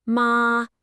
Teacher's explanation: Let it rise, ma, and it means hemp